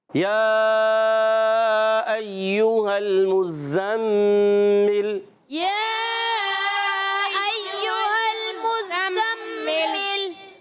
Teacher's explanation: مزمل میں میم کو زا سے ملائیں گے، زا مشدد ہے، ذرا رک کر ادا کریں گے. پھر زا کو میم سے ملائیں گے، اور میم مشدد ہے، ایک الف کا غنہ بھی ہوگا.